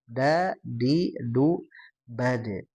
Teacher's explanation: kalau disukunkan huruf dal ini ada pantulan tapi sebelumnya ada syidah juga ya. Syidah itu tertahan suara da di du.